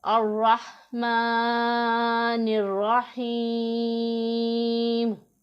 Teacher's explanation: यहाँ पर या मद्दा आ रहा है तो इसे भी हम 1 अलिफ के जितना लंबा करके पढ़ेंगे।